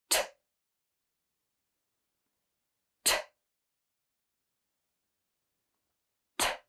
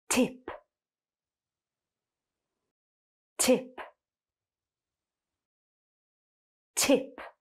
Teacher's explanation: you are not going to feel vibration in your throat. You're just going to push out some air. And for this, your tongue is going to be forward against your top teeth. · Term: unvoiced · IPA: /t/